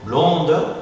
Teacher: il y a une prononciation un peu plus allongée en syllabe tonique suivi d'un n'importe quelle consonne par exemple blonde alors position tonique